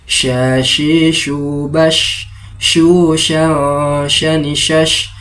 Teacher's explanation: Adapun makharijul huruf syin itu terletak pada bagian tengah lidah dan bagian tengah langitlangit mulut paling atas. Sya memiliki sifat tafasyi, yaitu menyebarnya nafas.